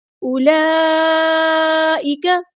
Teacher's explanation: اولئک، یہاں پہ دیکھیں اس لفظ کو اولئک نہیں پڑھنا، یہ واو مدہ نہیں ہے، کیونکہ واو مدہ کے لیے واو ساکن کا ہونا پہلی شرط ہے۔ یہاں پہ واو ساکن نہیں ہے، اس پہ کوئی جزم کا سائن نہیں ہے، اس لیے اس کو او نہیں کرنا، اولا فوراً کرنا